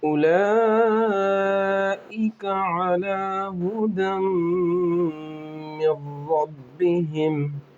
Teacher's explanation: اولئک، لام پر کھڑا زبر ہے، اوپر مد ہے، بڑا مد ہے، اس لیے 5 الف اس کو کھینچ کر پڑھیں گے